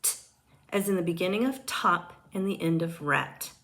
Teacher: T is an unvoiced alveolar stop sound.